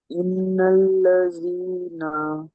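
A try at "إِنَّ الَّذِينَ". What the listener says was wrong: এখানে গুন্না করতে হবে, এটা ওয়াজিব গুন্না। নুন আর মিমের মাথায় তাসির থাকলে তাকে গুন্না করে পড়তে হয়।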